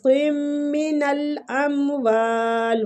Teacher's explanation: میم کے ساتھ ملاتے ہوئے غنہ کریں گے ، قم من الاموال، وا کو کھینچیں گے الف مد کی